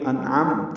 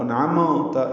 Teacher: میم ساکن پہ اظہار شفوی ہے، ہونٹ بند کریں گے، پھر جلدی کھولیں گے. انعمت یعنی قلقلہ نہ ہو، انعمت یہ غلط ہے، انو عمتا یہ نون پہ میم پہ قلقلہ نہیں ہوتا.